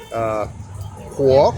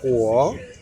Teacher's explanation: And it's in the fourth tone.